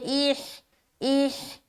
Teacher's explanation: ہا کو بالکل سینے سے نکالیں گے